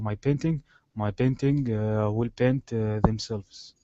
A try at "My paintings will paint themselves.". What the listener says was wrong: Let's go to this S sound here, paintings. My paintings will paint themselves.